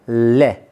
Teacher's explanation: ले आपका पार्श्विक था, पार्श्विक, क्योंकि जब भी हम ले का उच्चारण करते हैं तो हमारी जीभ का अग्रभाग आगे की तरफ मुंह के मध्य, हमारी जीभ का मध्य भाग मुंह के मध्य में आ जाता है और वायु किनारों से होकर निकलती है। तो ले पार्श्विक व्यंजन था, लेकिन उच्चारण जब इसका करते हैं हम तो उच्चारण स्थान होता है आपका दंत।